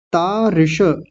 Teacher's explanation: छोटी ई की मात्रा है तो जल्दी बोलेगी और मूर्धन्य शकार पूरा बोलेंगे, आधा नहीं।